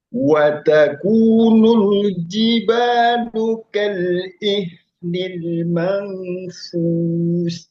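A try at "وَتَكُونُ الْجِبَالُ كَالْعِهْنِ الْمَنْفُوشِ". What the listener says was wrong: Nah, tinggal ditahan 3, kurang lama. Tahan 3, Mampusnya tahan 3, mangnya tahan 3. Jelaskan shinnya. Fush. Masih. Kurang sedikit lagi. Ya, kurang lama. 3 ketuk. Nah, sama shinnya diperjelas lagi. Fush.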